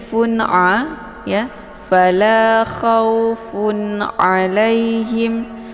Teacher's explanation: Ini dinamakan dengan izhar halqi. Jadi cara bacanya tanwinnya dibaca jelas ya, cukup ditekan saja tanpa harus dibaca dengung.